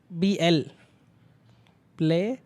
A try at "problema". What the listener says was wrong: प्रॉब्लम की spelling में प्रॉब्लेमा. हाँ ब्लेमा. ब्लामा नहीं ब्लेमा. ब्ले क्या हुआ? ब्ले. अरे ब्ला कैसे लिखता है? हाँ तो ब्ले में